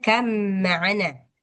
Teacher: Langsung dimasukkan secara sempurna ke huruf mimnya.